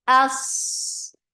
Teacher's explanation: We keep Hamza light for fatha open your jaws and keep Sod heavy. Sod has rakhawa and it has safir and it is heavy.